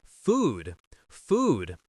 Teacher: What happens to that final D? We just cut it off. Food. And we're cutting off the next D.